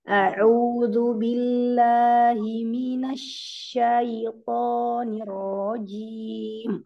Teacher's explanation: Ya, shinnya lebih disebar lagi.